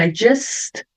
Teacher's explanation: Veja que o S eu puxo, então o T vai aparecer um pouquinho. I just. Mais suave, né?